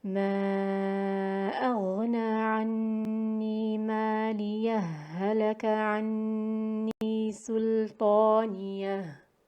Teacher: And with idgham, the idgham would be complete between the ha and between the first ha al-sakt, and the second ha of halaka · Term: idgham mithlain kamil